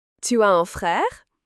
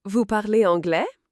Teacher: Simply raise your voice at the end of the sentence. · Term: Intonation